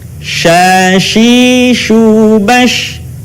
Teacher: Diucapkan, mengalir udaranya dan mengalir pula nafasnya, bahkan ketika melafalkannya menyebar nafas dan udaranya yang disebut dengan tafasyi